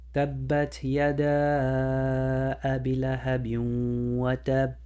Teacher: Then you apply Idghaam and you do the nasal sound 2 counts.